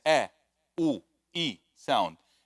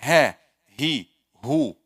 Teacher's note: Two letters come from أقصى الحلق, which are همز, ها, همز, not the alif, it's the a, u, e sound, and ha, he, hu, this ha sound.